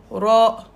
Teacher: On roule le R le bout de la langue. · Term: la lettre R